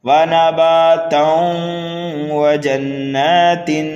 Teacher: کلمے کے آخری حرف پر 2 زبر ہیں اور آگے والی آیت میں واو ہے جو کہ یرملون میں سے ہے، یہاں پر کریں گے ہم ادغام